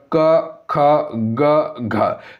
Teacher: क ख ग घ ये सभी कंठी ध्वनि के अंतर्गत आएगा